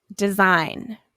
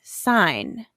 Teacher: In all of these, you see the letters G, N. But you don't hear the G, you only hear the N. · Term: n sound